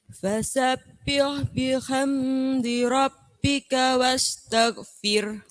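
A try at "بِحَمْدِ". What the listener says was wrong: Nah, bihamnya jangan lama-lama. Fasabbih bihamdi rabb. Nah, kalau bihamdi nanti jadi nengung.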